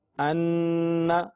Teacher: ان نون مشدد ہونے کی وجہ سے غنہ